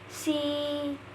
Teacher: when you make a sound like E in C, your tongue is very high up. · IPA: /iː/